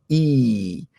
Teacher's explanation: it's spoken at the top of your mouth with your tongue high and your tongue is in the front of your mouth